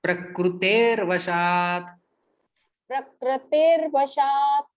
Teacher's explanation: वशात्, संधियुक्त शब्द बनता है, ये विसर्ग का रेफ में परिवर्तन होता है और वो व के ऊपर जाके बैठता है।